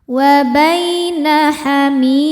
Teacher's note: Bai ada harfulin karena ada ya sukun sebelumnya fathah. Cara bacanya dilembutkan atau dilunakan. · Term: mad tabi'i